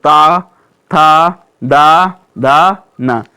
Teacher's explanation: आप जब धीरे से बोलेंगे तो ये ता, था सबकी जीभ कहाँ से लगेगी दोस्तों? ऊपर के दांतों से अवश्य लगेगी। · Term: ता वर्ग